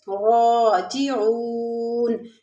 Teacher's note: را کو پور پڑھیں گے، اس کے اوپر زبر ہے اور کھڑا زبر ہے، تھوڑا سا کھینچ کے پڑھیں گے، اور او میں واو ساکن اس سے پہلے پیش واو مدہ ہے، راجعون۔